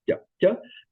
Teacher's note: That sounds like the soft T in Slavic languages, but with your tongue touching the lower front teeth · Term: palatalized ja